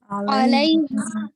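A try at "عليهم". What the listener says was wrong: علیہم نہیں جس سسٹر نے علیہم کہا وہ غلط کہا ہے. لائی ہاں جی اے نہیں بنانا، ٹھیک ہے. ایل اے وائی لے نہیں کہنا، ایل ای وائی لائی. ہاں اسپیلنگ کچھ ایسا دیں گے ایل اے ای لائی. ہاں جی لائی.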